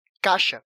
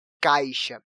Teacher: E a letra I dentro dessa sílaba acaba saindo um pouco fraca na hora de pronunciarmos.